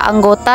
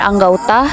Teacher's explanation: perubahan ini terjadi pada bunyi vokal tunggal o ke vokal rangkap au tetapi tetap dalam pengucapan satu bunyi Puncak hal ini terjadi karena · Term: diftongisasi